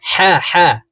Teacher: হা হলকের মধ্যখান থেকে হার হরফের উচ্চারণ হবে